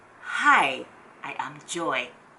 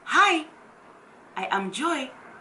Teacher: Keep that tone, that low tone, that falling tone.